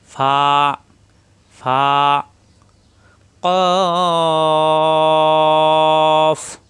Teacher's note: মোটা হরফ সরলি পরিমাণ টানতে হবে। ফা উপরে দুই দাতের আগার নিচের ঠোটের পেটে লাগবে। এক আলিফ পরিমাণ টান হবে।